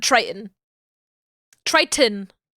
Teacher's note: glottal stop instead of the tee